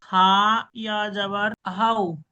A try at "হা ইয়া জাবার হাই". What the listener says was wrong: হাই ইয়া জবর হাই হবে, এখানে জবর উচ্চারণ, পেশ হলে হাও হতো।